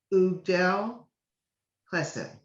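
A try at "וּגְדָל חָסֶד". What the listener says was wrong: Chased, actually. There's a little T under that.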